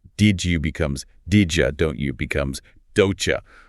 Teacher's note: >> Uh-huh. >> So, the vocal tract takes a shortcut and blends them into a J sound. Did you becomes didja. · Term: assimilation